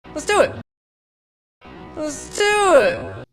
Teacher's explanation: The word do receives the primary stress.